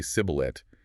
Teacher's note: The regional accent forced them to say sibboleth with a hard S instead of the shish.